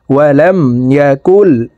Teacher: ইয়া জবর ইয়া, কাফ লাম পেশ কুল, ওয়ালাম ইয়াকুল। এই কাফ সরাসরি তাসদিদওয়ালা লামকে ধরবে, মাঝখানে জজমওয়ালা নুন বাদ পড়ে যাবে।